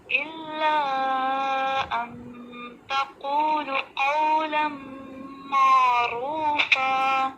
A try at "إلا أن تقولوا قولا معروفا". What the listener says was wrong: تقولو میں واو مدہ چھوڑ دیا آپ نے، دوبارہ پڑھیں.